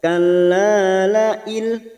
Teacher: nun sukun bertemu lam idgham bila guna